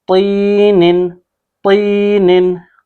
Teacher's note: तो यहाँ पे हम इसको अलग से पढ़ते हैं तीनिन, तीनिन, तो को हम क्या पढ़ेंगे, मोटा पढ़ रहे हैं, तीनिन तो, इसको हमने तीन ही नहीं पढ़ना, यानी कि ता नहीं पढ़ना, तो पढ़ना, ठीक है, मोटा पढ़ना है